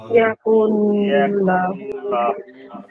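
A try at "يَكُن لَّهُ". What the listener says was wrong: দেখেন লাহু বলবো না লাহু বলবো এখানে লাহু হবে, কারণ আমরা জানি আল্লাহ শব্দ ছাড়া অন্য যত লাম আছে সকল লামকে চিকন করে পড়তে হয়। ল বলা যাবে না, লা বলতে হবে।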